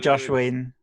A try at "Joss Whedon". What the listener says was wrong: It's Joss, not Josh.